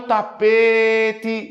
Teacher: Como demora mais tempo no P, ela não é oxítona, ela é uma palavra paroxítona. É a penúltima sílaba mais forte. · Olha o tapete, demora mais tempo onde? No P. Observe que não demora mais tempo no T.